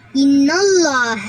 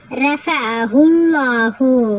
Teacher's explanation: நல்லா வாயை குவிச்சு நல்லா லவுடா சொல்லணும் சரிங்களாம்மா இது வல்லினமா ஓதணும் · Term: தப்ஹீம்